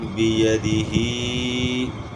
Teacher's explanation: یعنی ہا کو صرف کھینچنا ہے، باقی اس کے ساتھ جو حروف ہیں ان کو آپ نے کھینچنا نہیں ہے، صرف ہا کی آواز کو آپ نے کھینچنا ہے۔ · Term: کھڑی زیر